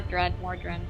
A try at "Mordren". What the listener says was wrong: there's no d at the end just mordren